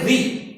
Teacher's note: री बोल रहे हैं तो हमारी जीभ का ऊपर वाला टॉप पॉइंट है, वो टॉप पॉइंट हमारा जाकर इस जगह टच कर रहा है मूर्धा को, आंशिक रूप में।